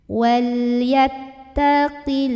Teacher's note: ada baris fathah berdiri di atas huruf lam, maka bacanya panjang 2 harokat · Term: mad asli